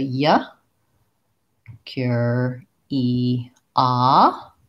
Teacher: instead of first syllable stress we have stress on the third syllable the O sounds like ah in this word so that's going · our vowels change so in curiosity in American English we have we go to more of the ooh sound with curiosity rather than just the ER sound like we had in curious